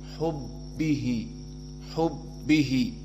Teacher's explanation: Dan am di sini matobi'i, ala matobi'i hubbihi, maka ba musyaddadah dan dia makhrajnya adalah dari syafatain